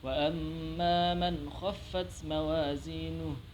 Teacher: Pada kata man khaffat, situ ada nun mati bertemu huruf kha yang harus dibaca jelas